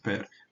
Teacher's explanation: ele é tá fechada a sílaba então é longa por posição ainda que o e seja breve por natureza seja breve mas a sílaba é longa por posição